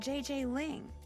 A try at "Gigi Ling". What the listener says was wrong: You mean Gigi Ling? Gigi. En français, you pronounce G like J and J like G. She may very well be JJ in America, but in France, she is Gigi.